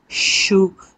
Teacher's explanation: श वाला जो हिस्सा है इसमें आपके गले में कोई वाइब्रेशन नहीं होती